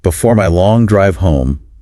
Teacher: putting emphasis and a bit of a humorous tone on home